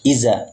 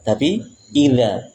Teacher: Walaupun sama-sama dari ujung lidah tapi bertengkirnya ujung lidah itu berbeda. Kalau dzal ujung lidah ditempel dengan ujung gigi seri atas.